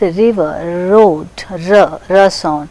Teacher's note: The tip of the tongue is brought near the rear part of the teeth ridge. Teeth ridge is alveolar ridge and behind that the tongue is coming close to that part. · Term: frictionless continuant